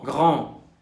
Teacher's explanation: Para un oído de habla española, la A nasal puede parecerse mucho a una O.